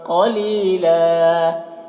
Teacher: قاف کو پر پڑھیں گے، لی میں یا مدہ ہے، 1 الف کے برابر کھینچیں گے